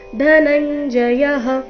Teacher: ಧ ಮಹಾಪ್ರಾಣ ರಸ್ವ ಬರಬೇಕು